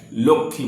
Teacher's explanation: আসলে বাংলায় আমরা কয়ে মূর্ধন্যস্বকে কয়ে খ বলি, তাই লক্ষ্মী বলি।